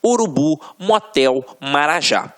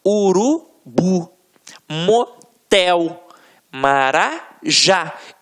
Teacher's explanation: Reparem que na hora da pronúncia, de forma mais aguçada, você vai perceber que realmente a pronúncia da última sílaba ficará mais forte. Aqui, ó, urubu, motel, marajá. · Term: oxítonas